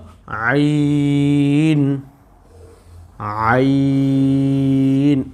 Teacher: তারপরে হলো আইন, আইন, এই যে আইন, এই বললাম হা আর আইন দুইটা একই মাখরাজ থেকে, এই যে গলার মধ্যখান রয়েছে কণ্ঠনালীর, এই কণ্ঠনালীর মধ্যখান থেকে আমরা উচ্চারণটা করব, তাহলে উচ্চারণটা সুন্দর হবে